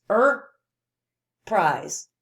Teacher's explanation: when i said er i held that a little longer why do you think i did that oh because it's made